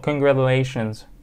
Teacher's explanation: T بين two vowels. So it's gonna be flat T, right? So congratulations.